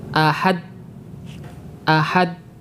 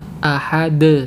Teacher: bunyinya seperti ini Ahad Ahad kemudian kita berikan sifat Qalqalah yaitu dengan memunculkan suara pada huruf yang sukun setelah memisahkan dua bagian alat pengucapan Ahad setelah kita melepaskan makhraj huruf Dal dari dua alat pengucapannya